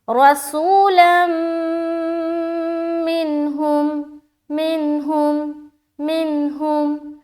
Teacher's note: नून की आवाज़ को जाहिर करना है, यानी कि देर नहीं लगाना, ठीक है। नाक में आवाज़ को नहीं रोकनी, बिल्कुल जल्द पढ़कर हम निकल जाएंगे। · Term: इजहार